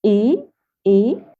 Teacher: the second tone, I mean the high rising tone